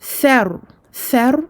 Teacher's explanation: On sort bien le bout de la langue, attention à ne pas prononcer un sin. Et le ra à la fin de ce verset est emphatique.